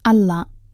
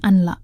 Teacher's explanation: Menurut ilmu tajwid, ini adalah hukum bacaan idgham bila gunnah. Artinya, suara huruf nun dilebur atau dimasukkan sepenuhnya ke huruf lam berikutnya, tanpa ada dengung. Jadi, dibacanya Allah, bukan anla.